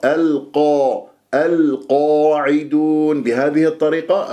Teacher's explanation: القاف راح تكون مفخمة مرتبة أولى لأنها مفتوحة بعدها ألف، تفخم الألف بعدها تبعا للقاف، الألف ساكنة بعدها، ما الطبيعي حركتين.